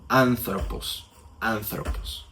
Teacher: Este es un espíritu suave. Y cuando el espíritu es suave, no vamos a modificar en nada el sonido de la primera vocal.